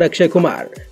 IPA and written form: əkˈʂeː kʊˈmaːr (Akshay Kumar)